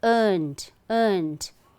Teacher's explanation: Earn, I feel the vibration, right? So it's d sound, earned